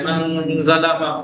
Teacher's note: من ظلم، من ظلم، من زبان وہیں تک لے جانی ہے لیکن ٹچ نہیں کرنی ہے. من ظلم، من ناک کی فضا سے کھینچ کے ادا کرنا ہے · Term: اخفا